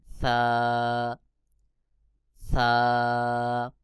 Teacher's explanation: জিহ্বার আগার সামনের উপরের বড় দুই দাঁতের আগার সঙ্গে লাগাইয়া সা উচ্চারণ হবে